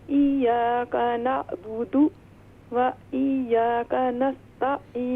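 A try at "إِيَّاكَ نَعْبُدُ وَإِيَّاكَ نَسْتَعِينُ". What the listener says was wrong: و ایاک نہیں، یہ دیکھیں یہاں پر یا پر دونوں یا جو ہیں مشدد ہیں، ان پر تشدید ہے، تو ہم اس سے پڑھیں گے ایاک نعبد و ایاک نستعین.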